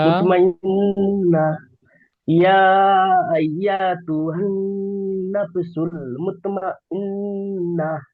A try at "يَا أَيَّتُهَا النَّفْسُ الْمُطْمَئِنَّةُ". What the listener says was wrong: ইয়া আইয়াতু, এই ইয়াটি টান হয়ে যাচ্ছে। ইয়া আইয়াতু।